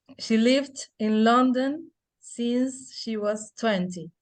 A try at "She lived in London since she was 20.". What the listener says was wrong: En London te falta un poquito más falling. In London since she was 20.